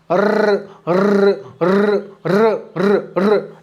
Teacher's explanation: र का है लुंठित। कैसे लुंठित है भाई, लुढ़कता है भाई, र र र र र र।